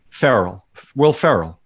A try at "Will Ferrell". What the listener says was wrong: Sounds like you're saying Farrell. That's Will Ferrell.